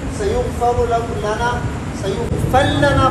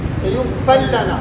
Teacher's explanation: ادغام کی صورت میں را کو ادا نہیں کریں گے